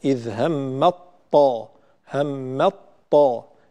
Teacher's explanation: عندما ندغم التاء في الطاء فإن الإدغام يكون كاملا ولا يبقى هناك أي أثر للتاء. إذ همت طائفتان فتصبح إذ همت طا همت طا، لا نقول إذ همت طا نبدأ بتاء وننتهي بطاء، وإنما ننتقل إلى طاء مشددة. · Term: إدغام التاء في الطاء